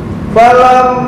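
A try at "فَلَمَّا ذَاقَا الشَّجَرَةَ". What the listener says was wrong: nabernya belum belum masuk, agak ke dalam dikit. Falam madza qashjarata badat.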